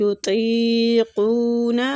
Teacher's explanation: طا کو مستعلیہ پور پڑھیں گے